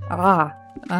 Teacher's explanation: English speakers usually just pronounce it like a vowel a but it's actually a sound that you make by tensing your throat and making a vowel sound at the same time